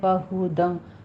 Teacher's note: ہا سینے کی جانب سے اقصی حلق سے نکالنا ہے